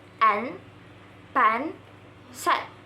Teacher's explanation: Notice that the A sound is short and clear, not too open, not too close. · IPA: /e/